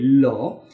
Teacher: এই ল বললে দেখা যাবে যে বাতাসটা বের হয় জিহ্বার দুই পাশ দিয়ে বেরিয়ে যায়। যেহেতু দুই পাশ দিয়ে বেরোচ্ছে বাতাসটা, ল উচ্চারণ করার সময় যেহেতু দুই পাশ দিয়ে বাতাসটা বের হয়, ঠিক সে কারণে এটাকে বলা হয় পার্শ্বিক বর্ণ।